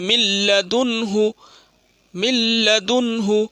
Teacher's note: من لدنہ، دنہ، من لدنہ، نون ساکن میں اظہار ہوا ہے، نون ساکن کے بعد ہا آیا، ہا اظہار کی حرف ہے تو نون ساکن کو ظاہر کر کے بلا گنہ کے ساتھ جلدی پڑھیں گے